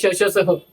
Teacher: श्वास में जिसमें हवा तेजी से बाहर निकल रही हो जिसमें श, स इसमें हवा तेजी से बाहर निकलती है।